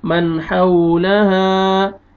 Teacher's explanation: نون ساکن کے بعد حروف حلقی میں سے حار ہے، یہاں پہ آپ نے اظہار کرنا ہے · سے حار ہے، یہاں پہ آپ نے اظہار کرنا ہے اور لاسٹ میں الف مد ہے، الف سے پہلے زبر ہے، آپ نے ہا کو کھینچنا